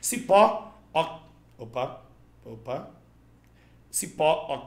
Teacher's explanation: oxítona, última sílaba tônica terminada em O